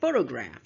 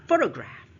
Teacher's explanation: The second syllable is schwa, which means it's almost unheard, right? So photograph.